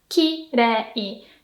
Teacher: kirei, beautiful, is high, low, low